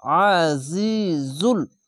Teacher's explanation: আইনটিকে মোটা করে গলা চিপে পড়বেন। আইন যাবার আ, জা জি, আ জি, জা লাম পেশ জুল, আজিজুল।